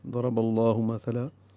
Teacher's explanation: زبر کی وجہ سے لام اسم جلالہ بھی پر ہے اور دو حرکات لمبا کرنا ہے۔ مثلا تا نرمی سے پڑھیں